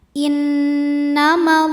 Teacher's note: Lam pada lafaz Allah atau lam jalalah dibunyikan secara tafkhim sebab huruf sebelumnya berbaris fathah. Maka cara bacanya tebal.